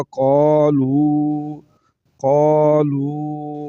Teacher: واو ساکن سے پہلے پیش ہے تو واو مدہ ہے تو اس کو لمبا کریں گے